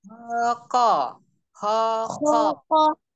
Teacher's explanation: Huruf kof itu jahru, jelas. Beda dengan kaf. Kalau yang alhams kaf ya.